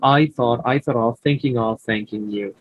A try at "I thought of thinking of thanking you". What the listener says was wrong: এখানে একটু মানে একটু ছোট ব্রেক হয়েছে, এটা মিলায় পড়ার চেষ্টা করবেন।